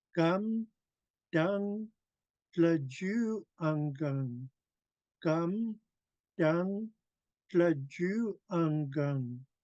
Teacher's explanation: I made sure to pour my tone into ju, and then I went low tone with ungung.